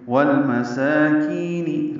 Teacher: سین کو 2 حرکات لمبا کرنا ہے، کی کو بھی 2 حرکات لمبا کرنا ہے، یا مدہ ہے.